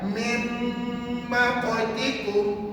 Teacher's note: Nun mati tu dah masuk dalam mim yang bersatu